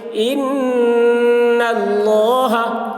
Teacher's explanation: نون مشدد ہے اس لیے نون میں غنہ کریں گے